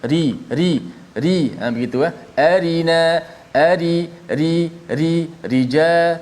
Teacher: Ra, ingat, bila sebut saja ra tu baris bawah, bila ra tu disebut baris bawah, automatik jadi nipis.